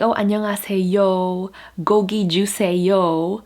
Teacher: What they do is they turn all the O, the monophthong O, into diphthongs.